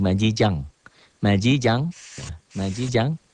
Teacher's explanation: majijan tuh majijan majijan majijan nih dibaca samar ikhbar seakan-akan majijan dibaca majija majija n-nya jadi Eng